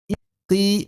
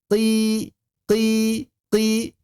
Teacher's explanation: Saat mengucapkan kasrah tengah lidah mesti naik. Qi maka tidak mungkin tebal sampai kapanpun.